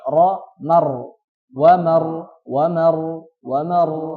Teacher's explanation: Salah satunya ini, yaitu ro sukun atau ro sukun yang sebelumnya adalah fathah. Ro sukun yang sebelumnya adalah fathah atau fathah setelahnya ro sukun. Ini dibaca tebal.